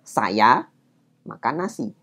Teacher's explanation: Jadi ada agak jeda di antara kata saya dan kata makan. Nah, antara kata saya dan makan itu ada jeda, disitulah partikel wa itu diletakkan.